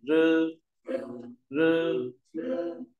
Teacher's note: r đầu cong lưỡi này rư rư âm mặt lưỡi này y đọc nguyên y · R đọc cong lưỡi này